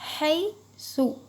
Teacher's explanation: حی کو نرم پڑھیے، یائلین ہوگا، مجھول نہیں پڑھیں گے، ہے نہیں بولیں گے، حیث۔